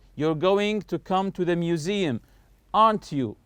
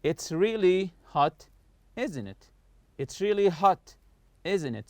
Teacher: falling intonation, meaning the voice goes down when we know the answer and are just asking for agreement.